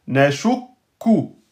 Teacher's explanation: On bloque sur le kef soukoun avant de sortir la voyelle.